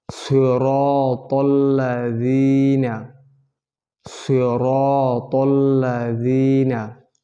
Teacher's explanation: র কে মোটা করে পড়বো